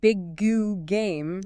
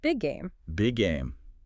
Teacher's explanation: You just hold that G position slightly longer and release it once, smoothly flowing into the next word. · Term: linking similar sounds